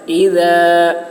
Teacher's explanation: اذا کو ذال کو باریکی کے ساتھ